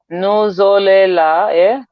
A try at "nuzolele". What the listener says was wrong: Point E, nuzolele.